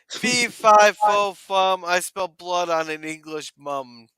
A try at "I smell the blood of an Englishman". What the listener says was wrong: No, it's fee fi fo fum. I smell the blood of an English man, not mum. You don't pronounce it like that. Englishman.